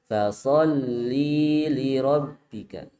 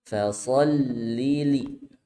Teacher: jangan sampai memanjangkan lamnya Lamnya dipendekkan